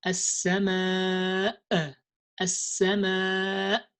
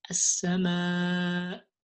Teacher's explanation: So you just end with the sound of the Hamza, as-sama, not more than that.